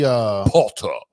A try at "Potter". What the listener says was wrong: Potter. No, there's no T. Potter. Harry Potter.